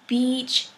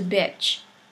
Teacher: if you mispronounce E into I, then you'll turn beach into bitch